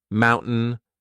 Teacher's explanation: this is when I'm replacing t with the glottal stop